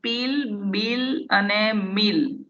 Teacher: આ એ બોલતી વખતે આપણા બંને લિપ્સ એકબીજા સાથે ટાઇટલી શટ થાય છે, બહુ મક્કમતાથી એ બંધ થઈ જાય છે.